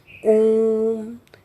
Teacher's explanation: दो मात्राओं से भी अधिक समय लग रहा है · जैसे कि हम ओम का उच्चारण करते हैं, ओम, तो ओ को अधिक खींचने पर ओम बोला जा रहा है ना, तो वो प्लुत स्वर कहलाते हैं। वैसे तो हमारे हिंदी में जो है प्लुत स्वरों का प्रचलन आजकल बंद हो चुका है, लेकिन फिर भी ओम जैसा उच्चारण जो है वो प्लुत में गिना जाता है।